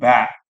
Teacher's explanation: Ba hanya melibatkan bibir.